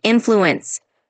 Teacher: when you say influence, just emphasize the first part like influence.